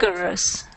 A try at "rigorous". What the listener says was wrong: No, rigorous. With an R.